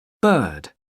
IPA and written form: bɜː(r)d (bird)